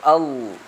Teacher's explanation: ഇസ്തിതാല എന്ന് പറയുക അതായത് നാവിന്റെ അരുവിൽ ശബ്ദം ഉണ്ടാകും അതായത് ളാദ് ഒക്കെ ഉച്ചരിക്കുമ്പോൾ അൽ അതാ അരുവിൽ ഇങ്ങനെ ശബ്ദം ഉണ്ടാകണം അതാണ്